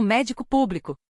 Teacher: Proparoxitonas tem a antipenúltima como médico público. Regra chave: toda proparoxitona é acentuada.